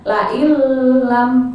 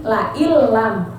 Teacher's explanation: Dia memasukkan ke huruf la ke huruf lam tapi tidak dengung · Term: idgham bilagunnah